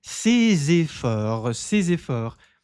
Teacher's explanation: esse S mais esse E da próxima palavra se transforma em um som de Z